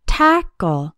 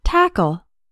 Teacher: tackle has two syllables and the stress is on the first syllable tackle the second syllable sounds like a short UL like in